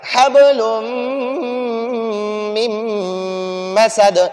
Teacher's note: غنہ ناک میں آواز کو بھی چھپائیں گے